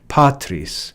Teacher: a two-syllable word where the first syllable, which is the second to the last, is accented.